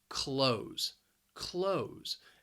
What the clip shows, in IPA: kloʊz